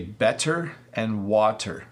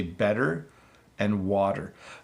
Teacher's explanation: The challenge comes in that your tongue hits the top of your mouth, but it doesn't stay there.